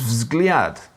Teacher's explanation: V, Z, G, L, and J are like V, Z, G, L, and Y all together before you even get a shot at a vowel. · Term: consonant clusters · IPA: vzɡlʲat